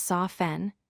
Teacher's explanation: The word soften is spelled S-O-F-T-E-N, but we pronounce it as soften, dropping the T sound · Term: silent T